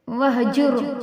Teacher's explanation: واہجر، را کو پر کر کے پڑھیں گے کیونکہ اس سے پہلے پیش ہے